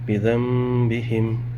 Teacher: یہاں دیکھ سکتے ہیں نون ساکن، اس کے بعد پھر با آ رہا ہے، اس نون کو میم میں بدل دیں گے